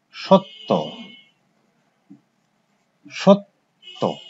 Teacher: একটা ত আছে, তার সঙ্গে জফলা যুক্ত আছে, কিন্তু উচ্চারণ কি হলো ত দ্বিত্ব হলো, দুবার উচ্চারিত হলো